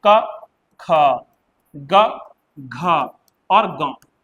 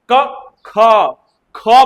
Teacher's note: ग कम समय लग रहा है। घ ज्यादा समय लग रहा है। महाप्राण है।